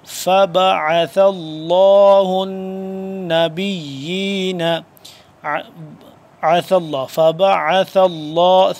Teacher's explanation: ثا نرمی سے جیسے ذال پڑھتے ہیں نرمی سے، ویسے ہی ثا نرمی سے زبان کی نوک کو دونوں دانتوں کے درمیان میں سے ذرا باہر کی طرف نکالیں گے تو ذال اور ثا دونوں اس طرح سے ادا ہوں گے.